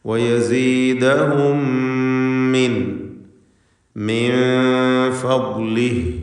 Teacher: സാക്കിനത്ത മീം ശേഷമുള്ള മീമിൽ പൂർണ്ണമായും ലയിപ്പിച്ച് ഒറ്റ ശദ്ദുള്ള മീമാക്കി മണിക്കണം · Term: ഇദ്ഗാം ഷഫവി